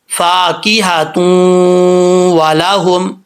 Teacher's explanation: یہ ادغام یرملون کی تعریف ہے. اور یہاں ایک الف کی مقدار جو ہے وہ غنہ کیا جائے گا جب تا کو واو سے کنیکٹ کریں گے · والاہم لام کو لمبا نہیں کریں گے، لام کے اوپر زبر